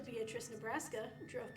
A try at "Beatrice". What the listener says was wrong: It's not pronounced Beatrice. That's fair, but it's beet rice.